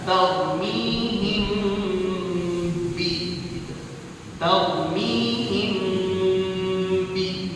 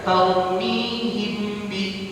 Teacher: ikhfa syafawi, mim mati bertemu ba, jadi ditahan